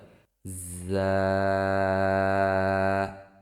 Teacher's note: যা উচ্চারিত হয় জিহ্বার আগা সামনের নিচের দুই দাঁতের পেট ও আগার সঙ্গে লাগিয়ে উচ্চারিত হয়